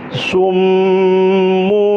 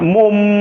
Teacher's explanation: Menjadi mum. Tapi bibir jangan rapat. Jadi summu, jangan mum, angin keluar.